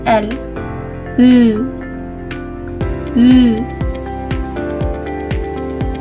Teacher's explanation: Pagilid ang hanging lumalabas sa gilid ng dila sapagkat ang dulong dila ay nakadikit sa punong gilagid.